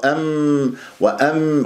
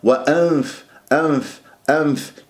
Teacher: هذا وانف نون او نون ساكنه او تنوين جاء بعدها ف دائما انت الثنايا العليا الى باطن الشفا السفلى ومن غير اطباق انظر الى المراه اذا طبقت تخنق الغنه صارت كانه ميم وام